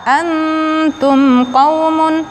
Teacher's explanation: nun mati bertemu dengan ta, ikhfa, ditahan selama 3 harakat, hampir mengucapkan makhraj ta